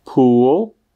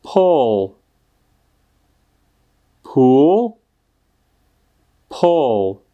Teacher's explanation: bazén se vysloví s dlouhým U, pull, tak sloveso zatáhnout se vyslovuje, jako byste spíše chtěli říct něco mezi O a U